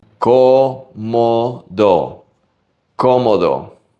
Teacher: Every O in this word sounds exactly the same.